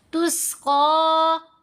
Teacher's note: क़ाफ के ऊपर खड़ा ज़बर है, लंबा करेंगे, क़ाफ को मोटा पढ़ेंगे, हरूफ मुस्तालिया में से है।